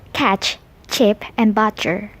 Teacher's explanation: The sound is produced without vocal fold vibration and is, therefore, named a voiceless alveopalatal affricates.